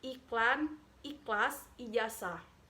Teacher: fonem I adalah vokal tinggi depan tak bulat. Vokal ini dibentuk dengan kedua bibir agak terentang di samping